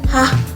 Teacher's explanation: Kemudian bunyi glotal ada hah. Bunyi ini terjadi karena ada hambatan udara pada glotis.